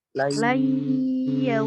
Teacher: Jadi harus didengungkan, ditahan 2 harokat. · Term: idgham bigunnah